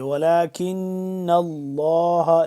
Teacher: نون مشدد ہے تو اس کے اوپر ہم کیا کریں گے، یہاں پہ غنہ کریں گے